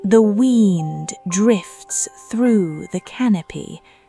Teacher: letting the vowels stretch a little longer than usual